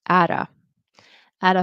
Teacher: this turns into a fast t which is which sorry a flap t